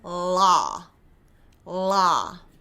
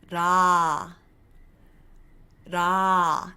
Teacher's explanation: So I'm not going la, la. Instead, I am saying it with the L, but it's a very, very soft tongue flick.